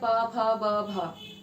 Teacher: दोनों होठ आपस में टकराते हैं और ध्वनि उच्चारित होती है